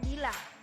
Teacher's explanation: bunyi I dengan ciri-ciri tinggi, depan, tak bulat